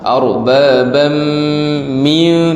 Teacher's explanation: tanwin bertemu dengan mim, dengunglah. Arbabam min, 2 dengung tu.